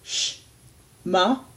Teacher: Ayin is silent, so technically you could go sh, ma, and still say the same thing.